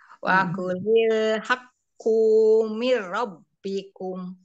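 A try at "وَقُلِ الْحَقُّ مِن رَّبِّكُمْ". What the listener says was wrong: Bagus kunya, tapi jangan dipanjangin ya. Wa kulil haqqu mir rabbikum. Jangan ku, tapi haqqu mir rabbikum.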